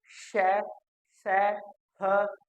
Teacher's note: हमारे मुख में एक संघर्ष पैदा होने के साथ साथ जो हवा है वो ऊष्म हो जाती है, गर्म हो जाती है।